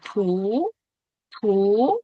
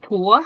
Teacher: cái âm này là âm u em nhá em âm u ha chúng ta sẽ đọc là thú thú không phải thúa